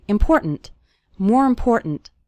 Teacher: the word more kind of runs into the word important and the last syllable of important kind of gets reduced